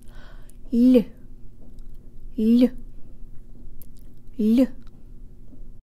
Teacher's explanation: it's an L with a slight Y sound built in. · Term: soft L